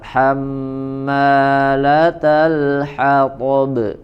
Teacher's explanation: Tapi maknya kepanjangan. Hammala, ma dua harokat.